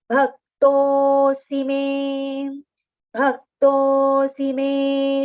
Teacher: to we have to prolong, but si is with a short pronunciation. So to keep it shorter, we have to recite the next letter me immediately, right?